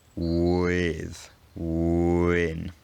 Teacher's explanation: For example, the w consonant is pronounced with rounded lips, and so if you're talking quickly and you say a word like with or win, the lip rounding from the w will often end up spilling over into the I